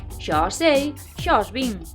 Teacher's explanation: a pronuncia correcta sería fusionar ese A e ese O nun O aberto.